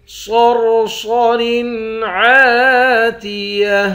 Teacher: ہا کے نیچے دو زیر ہے، یہاں اخفا کریں گے۔ صاد، را اور صاد تینوں کو موٹا پڑھیں گے